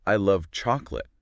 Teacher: the stress on love shows how much I really mean it